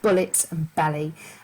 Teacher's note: we've got plosive alliteration that's this harsh sound of bullets and belly